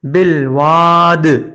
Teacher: جب دال کو جزم والا کیا تو دال پہ کلکلا ہوا، واو کو ایک الف کے برابر کھینچا ہے